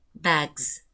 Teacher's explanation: That is why we should have the Z allomorph. The S plural morpheme here is pronounced as Z